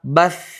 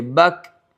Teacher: اس میں جس طرح سانس جاری رہتی ہے ویسی کاف کے اندر جاری نہیں رہے گی، وجہ یہ ہے کہ شدت کی صفت زیادہ پائی جاتی ہے